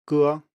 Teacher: This sound is rather weird for speakers of most other languages because it's something fairly unusual. It's a close back unrounded vowel, and those are fairly uncommon.